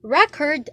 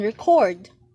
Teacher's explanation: if you put the stress in the first syllable it means a noun or an adjective but if we put the stress in the second syllable it means an action word or the verb